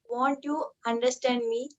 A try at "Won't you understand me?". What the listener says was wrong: Okay, very good ma.